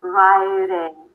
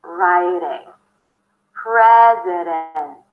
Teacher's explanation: you bring the tongue up, but you just slightly touch the upper palate. You're suggesting that there is a D there. Riding. Think of making it super soft, super sweet, super light.